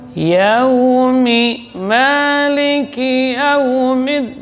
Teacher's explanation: bunyi ya tidak boleh cenderung ke waw. Dia ya tetap jelas. Ya. Yaumi itu bukan yo tapi ya.